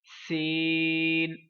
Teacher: زیادہ لمبا کرنا ہے اور سیٹی کی آواز واضح آئے